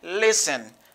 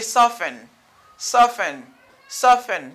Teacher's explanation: The letter T is not pronounced. It is silent.